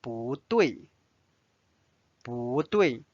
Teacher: Notice 不 is changed to the second tone because 对 is the fourth tone.